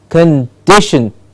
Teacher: it's a fairly clear upward movement for the stressed syllable